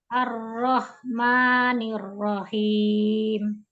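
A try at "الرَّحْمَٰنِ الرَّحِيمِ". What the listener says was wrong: Ya, Ar-Rahmanir-Rahim. Ya, alhamdulillah. Sudah oke.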